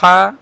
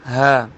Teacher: ہا گلے کے درمیان سے، ہا گلے کے نیچے والے حصے سے